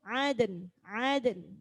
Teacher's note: karena ada dal sukun, nunnya juga ikut disukun, jadi harus ada bunyi nun.